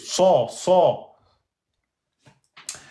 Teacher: Sad emphatique et sin aminci